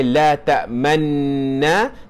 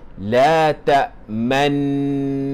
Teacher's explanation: Jangan dibaca sebagai la tak tamna tetapi bacanya sebagai la takmanna. Dibaca dengan dengung berserta dengan isyarat muncungkan mulut. Itulah bacaan secara ismam.